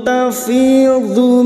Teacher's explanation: Dhad memiliki sifat yang tidak dimiliki oleh huruf lain yaitu sifat istithala tapi lidah nempel pada gigi geraham atas boleh kiri boleh kanan.